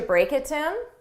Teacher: notice the last two words really sounded like one word